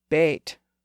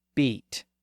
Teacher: the long a sound was raised up to e